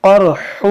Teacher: قرح یہ قاف موٹا کریں گے اور یہ ہا ہے, یہ ہا نہیں ہے تو چشمے والا, اس کو پڑھنا ہے نرمی سے. قرح یہ حلق سے ادا ہوتا ہے, بیچ حلق سے.